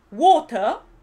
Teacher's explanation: a no ser que seas escocés la r final no se pronuncia